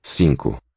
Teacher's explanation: N nasalizes that first vowel. And the second is raised from O to U.